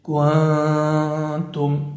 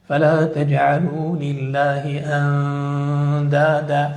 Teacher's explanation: ومع الدال والتاء تكون غنة مرققة أي قريبة للإدغام